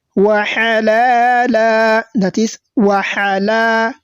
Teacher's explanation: The lam has been elongated, and this type of rule is known as al-madd al-asli.